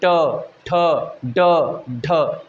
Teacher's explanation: हम बोलते समय जीभ हमारी घूम जाती है मुड़ जाती है · जिस वर्णों को पढ़ने में हमारी जीभ मुड़ जाए उसे कहते हैं मुर्धन्य